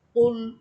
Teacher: এখানে হবে কফ লাম পেশ কুল। কুল জিহ্বার গোড়া উপরে তালুর সাথে লাগবে